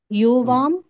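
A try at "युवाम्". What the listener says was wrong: యువాం దగ్గర యుకి దీర్ఘం ఉండకూడదు. యువాం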